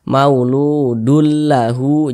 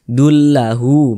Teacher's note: Jadi bunyi tanwin ini dimasukkan ke huruf lam. Kita baca mauludul lahu.